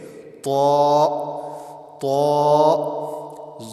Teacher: تا بالکل باریک ہے لیکن طا موٹا کر کے پڑھیں گے